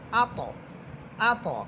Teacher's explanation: আত কলকলা হবে এবং ত এটা মোটা হবে